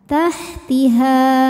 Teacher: Ketika berhenti di ha hukumnya adalah mad thobi'i. Sebab ada alif yang sebelumnya berharakat fathah. Cara bacanya dipanjangkan dua harakat. Tahtiha. Namun jika diteruskan pemanjangnya ini gugur, h-nya dibaca pendek.